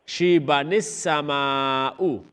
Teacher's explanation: شیبہ یہاں پر ملا کے وصل کر کے پڑھ رہے ہیں, شیبہ کو السما کے ساتھ ملا کے, لہٰذا نون یہاں پہ ادا کریں گے, الف کو نہیں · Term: نون قطنی